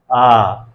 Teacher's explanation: जब आ स्वर का उच्चारण करेंगे तो हमारा जो मुख है वो पूरी तरह से खुला रहता है। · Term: विवृत